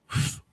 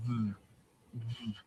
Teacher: letting it go through the lips while making a lot of vibrations